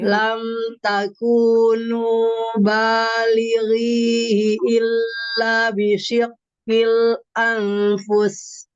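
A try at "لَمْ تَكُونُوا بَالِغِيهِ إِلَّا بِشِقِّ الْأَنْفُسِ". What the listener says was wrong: diulang. Hati-hati illanya panjang.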